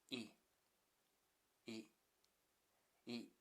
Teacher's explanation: this vowel is never the lax e. It is always e similar to short e in Spanish, Polish or Italian.